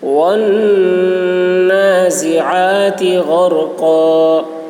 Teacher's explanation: غین کی آواز موٹی ہوگی، را پر ہوگی، اور قاف کی آواز بھی موٹی ہوگی